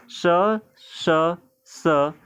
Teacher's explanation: इन तीनों को बोलते समय स्वर यंत्री में कंपन नहीं होता है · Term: अघोष